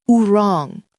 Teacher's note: It was a rounded sound, almost like a little ooh before the R. If you try to say ooh right or ooh wrong, you can feel your lips rounding.